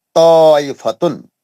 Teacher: हुर्फ ता साकिन का हुर्फ ता मुतशद्दद में इदगाम मुतजानिसीन हो गया